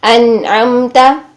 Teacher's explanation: نون کو بھی ساکن حالت میں ہلائیں گے نہیں، قلقلہ نہیں کرنا ہے